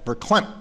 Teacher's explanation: he said verklempt without the T at the end, or glottalizing that T